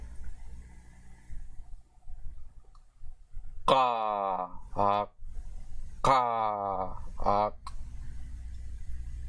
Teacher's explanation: This is the long voiceless velar plosive consonant.